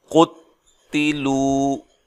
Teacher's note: قاف اور تا کو لمبا نہیں کریں گے، لام کو لمبا کیا جائے گا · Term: واو مدہ